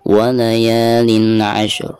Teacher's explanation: Pertama kita baca dulu huruf shin sukunnya, lalu ujung suaranya ada huruf ro sukun. Contohnya walayalin ashur, seperti itu. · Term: dua huruf sukun